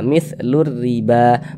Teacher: huruf lamnya dia tidak ada tanda bacanya jadi cara membacanya itu dari lu langsung masuk ke huruf ro ini nah mitlur riba makanya alif lam syamsiah disebut juga dengan Idgham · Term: alif lam syamsiyah